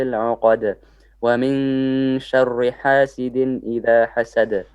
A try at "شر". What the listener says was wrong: Okay, you need to do a bit of work on your ra. It needs to be more flat. Okay, you're making it a little bit heavy. You're saying shari, no, shari flat.